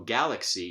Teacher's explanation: we have an a vowel reducing to schwa and a coda consonant, and yet it is not stressed in penultimate position.